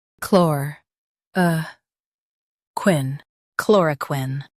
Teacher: Emphasize chlor and soften quin. chlor uh quin, chloroquine Emphasize chlor and soften quin.